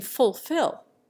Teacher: An American, for example, almost always sounds the first L in fulfill. An Englishman makes the first syllable foo.